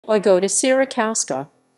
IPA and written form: vɨˈɡɔda ɕeraˈkɔfska (Wygoda Sierakowska)